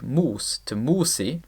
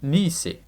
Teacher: a back vowel is changed into a front vowel equivalent in anticipation of an I vowel in the next syllable. In Old English, we see this mutation basically affect all the vowels it possibly could, with all back vowels being fronted when they stood in a syllable before I. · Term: I mutation